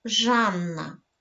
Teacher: в ньому дві букви н це подовжені приголосні